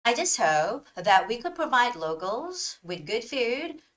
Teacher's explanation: So there should be a stop before the word that, not after the word. So when I read it, it would sound like, I just hope that we could provide locals with good food, drinks, and snacks for years to come.